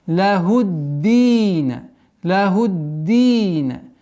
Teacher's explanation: С огласовки дамма уходим на удвоенный даль. И два счета долгота.